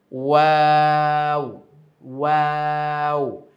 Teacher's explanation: ওয়াও বলতেও কিন্তু ঠোঁটটা গোল হবে।